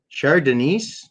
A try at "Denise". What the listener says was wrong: Well, you don't pronounce the S right, but like I mean, she lives there.